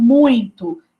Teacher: Os sons nasais, isso acontece muito com os sons nasais, então, por exemplo, muito, né? Esse I aí, ele é nasalizado, então ela acha que tem uma letra N, por causa desse sonzinho nasal